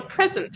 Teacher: in stress the word present for example is a two-syllable word if we stress the first syllable it is a noun which is a gift